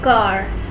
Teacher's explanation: It is an unrounded vowel produced when tongue is in low front position in the mouth.